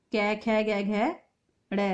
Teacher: ख वर्ण का उच्चारण स्थान कंठ है